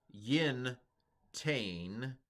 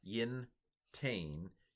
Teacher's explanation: the nun gets sucked into the second letter of it, and it becomes a doubled tav there. So this dot here represents the nun, an assimilated nun.